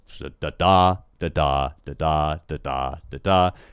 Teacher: it's got 10 syllables they alternate in stress and you have unstressed and stressed